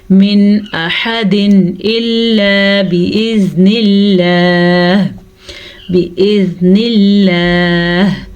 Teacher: لفظ اللہ سے پیچھے زیر ہے تو لفظ اللہ کو ہم باریک پڑھیں گے · ظاہر کر کے پڑھیں گے بغیر غننے کے پڑھیں گے